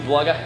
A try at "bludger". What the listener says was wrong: Bludger. I think you combined bugger and That sounds Australian, honestly.